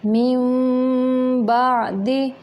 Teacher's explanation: नून की आवाज़ को मीम में बदल के पढ़ेंगे। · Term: इक़लाक़ का कायदा